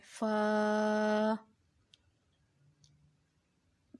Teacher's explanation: हुरूफ शफ़विया ऊपर के दांतों के किनारे और निचले होंठ के तर हिस्से से अदा होता है। हुरूफ शफ़विया फ़ा है ये।